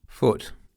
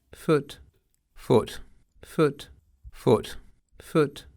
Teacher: В консервативном акценте эти гласные были задними, А в современном британском стандарте они съехали вперед и стали центральными. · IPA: /ʊ/